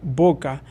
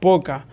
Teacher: B y P son bilabial y son, una es sorda y la otra es sonora.